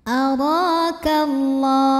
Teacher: karena alif lam menghadapi huruf syamsiyah yaitu lam, maka cara bacanya alif lam tidak dibaca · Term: alif lam syamsiyah